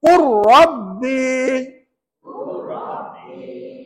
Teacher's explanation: masukkan huruf pertama ke dalam huruf yang kedua dan dibaca tanpa dengung